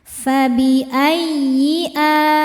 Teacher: tasydidnya dibaca dengan naber, naikkan intonasi suara tanpa menahannya jika sebelumnya bukan tanwin atau nun sukun.